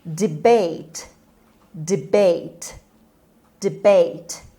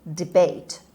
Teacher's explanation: The stress is on B sound, is on the second syllable. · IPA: /dɪˈbeɪt/